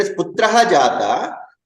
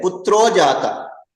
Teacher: If it is putraha jata, then putro jata. Because the visarga becomes okara there. There is a visarga sandhi there.